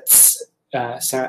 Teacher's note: So it's being made there. But it's got the T sound, like the stop or plosive sound, and then turning into a fricative S. So it's a ts sound, like a TS, or usually the English equivalent would be like TZ.